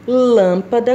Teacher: lâmpada é uma palavra proparoxítona porque a sua sílaba tônica está na antepenúltima posição